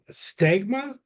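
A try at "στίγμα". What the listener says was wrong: Stigma. Stigma. That long E sound.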